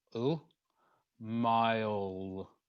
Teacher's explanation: We then have an approximant, which is the L sound in the middle there. Oh, mile. And we need to make sure that we get all the way around that L sound.